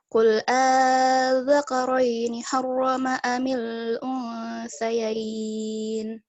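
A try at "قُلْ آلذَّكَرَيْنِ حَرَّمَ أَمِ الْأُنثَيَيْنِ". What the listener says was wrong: Tadi kalau boleh agak koreksi dikit yang selain dari hamzah, di za-nya yang pas dia tasydid. Kalau tasydid kan dia dihentakkan, Cik, itu ya. Adzakarain. Jadi bukan lewat aja, bukan adzakarain. Harus dihentakkan.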